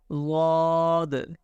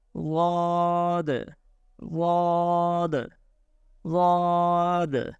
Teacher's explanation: correct pronunciation of Dwad is pronounced from the sides of the tongue, touch the roots of upper molars